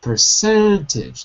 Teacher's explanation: The stress is cent. Therefore, the per and the age are not really pronounced. We say per, and se, cent, and edge.